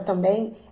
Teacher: A palavra também, ela tem um acento. Na palavra também, a parte mais forte, a sílaba mais forte da palavra é o bem. Por isso, a gente classifica essa palavra como oxítona.